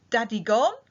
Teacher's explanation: clear to us it's a question so Daddy God is obviously a rising intonation at the end to ask has daddy gone